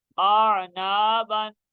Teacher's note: ये अलिफ मद्दा है, इसको थोड़ा सा हम खींचेंगे, ये करीब यानी 2 हरकत के बराबर इसको खींचेंगे।